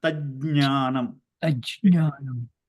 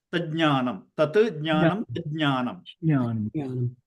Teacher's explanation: ja should be heard, nya should be heard because there are two jakaras here together